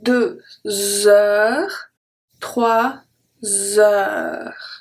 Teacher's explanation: the H is silent, so we make the connection between the number and heure